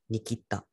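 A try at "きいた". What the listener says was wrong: Kita. Make sure it's a Kita. Long E. Because Japanese long vowels are different words. Because a kita, for example, would mean to cut something.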